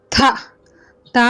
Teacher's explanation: நம்மளோட நுனி நாக்கு மேல் வரிசை பல்ல படும்போது தா சொல்லணும்